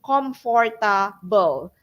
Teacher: they changed the F sound to P sound